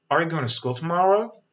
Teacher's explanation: See, there's a rising intonation at the end. Right? صدا میره بالا، یه اوج میگیره توی انتهای سوال. · In terms of intonation, this should have a rising intonation at the end.